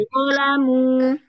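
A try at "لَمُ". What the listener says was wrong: Dhammahnya di lebih sempurnakan lagi. Jadi, kalau dhammah itu ya, arahnya itu bukan ke atas,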